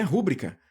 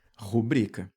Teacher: A sílaba forte vai cair aqui, ó, no bri.